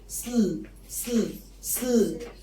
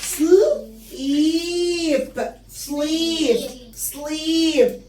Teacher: لما بيجي الاس والال 2 consonant مع بعض ما بخرجش اي هوا بينهم، فبقول سل سل سل، وببتدي بقى افتح بقي على حسب الفاول اللي جاي بعد السل.